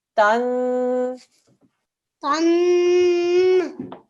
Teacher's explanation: Noon mishaddad. 2-second nasal sound.